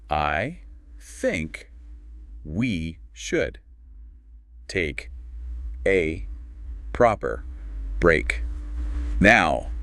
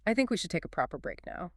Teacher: The stress hits think and break